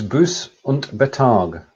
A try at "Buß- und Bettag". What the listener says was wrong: Buß und Bettag. So the Bettag, the gap goes between the 2 T's. It's not a bet.